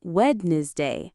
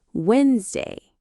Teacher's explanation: the middle D and E sound disappear